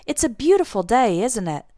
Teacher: when we use the question tag in this way, our intonation goes down at the end instead of going up like a normal question.